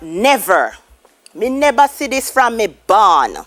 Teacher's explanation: so the v is replaced with the b